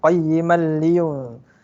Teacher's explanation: Huruf nun dah tak bunyi dah.